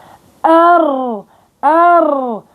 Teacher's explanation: لازم انا ادفع بالراء ار. ليش؟ لانه في تضام للوترين الصوتيين، فلازم ادفع فيها من الرئتين. طبعا ايضا في صفة الانحراف، في صفة التكرير، في صفة التكرير ارتعاد.